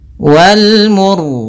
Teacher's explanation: Pada bacaan wal mursalati, di sini wal al, ini ada alif lam qamariyah, yaitu alif lam yang ditulis dan dibaca huruf lamnya dengan jelas, yaitu adanya huruf alif lam bertemu dengan mim. Kemudian ro-nya di sini kita baca dengan ro tebal disebabkan karena sebelum huruf ro yang disukunkan ada huruf yang dhammah.